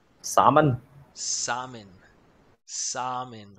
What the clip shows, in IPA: ˈsɑm ən